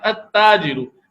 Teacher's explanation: اس میں لام نہیں پڑھا جا رہا بلکہ لام کی جگہ تا ہی کو تشدید لگا کے 2 بار پڑھا جا رہا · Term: حروف شمسیہ